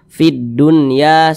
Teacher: huruf lam tidak dibaca langsung masuk ke huruf yang di depannya · Alif lam syamsiyah itu biasa disebut juga dengan idgham syamsiyah, karena dia cara membaca huruf lamnya ini dibaca idgham. Jadi huruf lamnya ini dia tidak dibaca langsung masuk ke huruf dal yang di depannya nih.